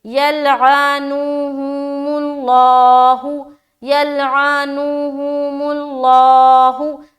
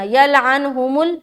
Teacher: आइन को नून से मिलाना नहीं है, बल्कि अलग अलग पढ़ना है